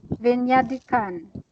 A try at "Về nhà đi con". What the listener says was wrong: Yes. Yes.